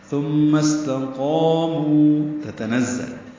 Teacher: ثم استقاموا تتنزل تا نون زائن پر زبریں ہیں، جلدی پڑھیں گے. نون کو زا سے ملائیں گے، زا کو تیز صفیر کی آواز سے ادا کریں گے. لام کو معروف طریقے سے پڑھیں گے.